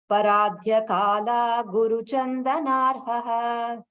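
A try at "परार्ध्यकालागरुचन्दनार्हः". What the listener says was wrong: Aguru. Should be agaru.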